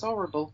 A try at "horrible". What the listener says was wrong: Oh, did you just drop an H?